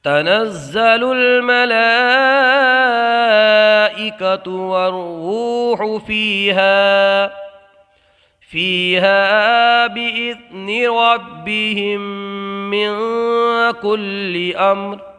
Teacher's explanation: ادغام شفوی کا قاعدہ یہ ہے کہ میم ساکن کے بعد دوسری میم آ جائے تو ادغام شفوی ہوتا ہے، غنہ کر کے پڑھیں، تو میم ساکن کے بعد دوسری میم ہے، غنہ ہوگا۔